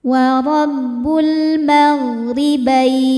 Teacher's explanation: Lalu ada alif lam qamariyah karena alif lam menghadapi huruf qamariyah yaitu mim, maka lam dibaca jelas. · Ro dibaca tarqik karena berharakat kasrah maka dibacanya tipis. Bain saat berhenti hukumnya madlin sebab ada huruf lin bertemu dengan huruf yang disukunkan karena waqaf.